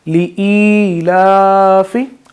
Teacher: एक अलिफ की मिक़दार में हम अपनी आवाज़ को लंबा करते हैं